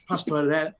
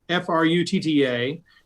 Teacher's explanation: if it's surrounded by two vowels, like pastorella, you're going to flip it. If it had a consonant preceding or following the R, you would roll that R like crazy